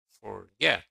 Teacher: Forget is stressed on the second syllable.